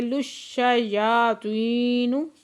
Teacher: لام کو شین کے ساتھ ملا کے، شین مشدد ہے، سختی سے پڑھیں گے